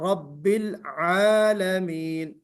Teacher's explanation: रब्बिल आलमीन में देखिए आपसे भी आइन नहीं निकला, आइन निकालना है।